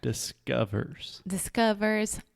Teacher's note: there's no o in the word discover yes we write this word with an O but it's not it's the schwa sound this is a so don't try to make a circle with